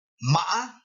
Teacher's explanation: the tone Rises then Falls then rises again